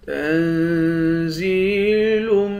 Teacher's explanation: زا کو یا کے ساتھ ملا کر یا کو ایک الف کے مقدار کھینچیں گے